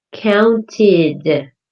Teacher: The ed sounds like id